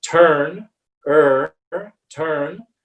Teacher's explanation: it's a central sound it's a more open sound but it's it's very much in the middle